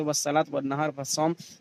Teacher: لام کا تلفظ نہیں ہوتا ہے اور لام کے بعد کا حرف مشدد ہوتا ہے، جیسے والصلاۃ والنہار والصوم. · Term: حروف شمسی